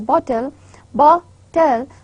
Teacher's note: So in bottle, bot and tull, the bot is the first syllable, it has a vowel in between, but the second syllable tull, it has only two sounds, that is ta and la, and they are not having any vowel in between.